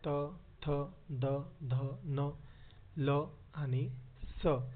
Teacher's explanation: ज्या वर्णांचा उच्चार करताना जिभेचा स्पर्श दाताला होतो अशा वर्णांना दंत्य वर्ण असे म्हणतात